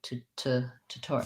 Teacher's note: the t says it's actual aspirated sound because it's at the start of a stressed syllable